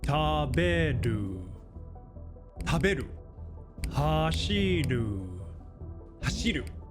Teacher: taberu and hashiru both have 3 kana, so they're the exact same 3 Mora length in duration, and each kana individually is the exact same length